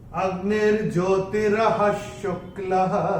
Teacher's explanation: पहले चरण में विसर्ग जो आ रहा है ह के बाद, उसके बाद का अक्षर है श, और विसर्ग के बाद जब श आएगा तो श या स आता है, तो विसर्ग का उच्चारण आधा श या स होता है। चूंकि यहाँ पे श आया है तो यहाँ पे विसर्ग का उच्चारण होगा आधा श। · यह विसर्ग जो हम देख रहे हैं चरण की समाप्ति पे है, इसका उच्चारण केवल और केवल ह ही होगा